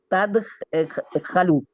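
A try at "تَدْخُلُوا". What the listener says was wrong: آپ نے خے کی پیش کو زبر سے کیوں بدلا ہے؟ خو خولو ہے.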